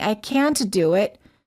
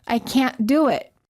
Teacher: Americans hold the T and say, I can't do it. Held T plus a consonant.